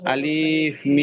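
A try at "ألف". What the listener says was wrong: আলিফ টান হবে না, আলিফ হবে না, আলিফ তাড়াতাড়ি আলিফ।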